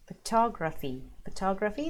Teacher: photography the middle is emphasized